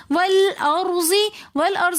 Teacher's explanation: वल अर्ज़ी में रॉ साकिन, उससे पहले ज़बर होने की वजह से हम इस रॉ को मोटा पढ़ेंगे। वल और रॉ को हमने तकरार के साथ पढ़ना है।